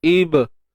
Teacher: Ibra di sini ba yang sukun kita sebut qalqalah sughra kan, lantunan qalqalah, lantunan yang lemah. Ra tebal sebab baris atas, dan dibaca mat asli lah, dibaca dengan 2 harakat.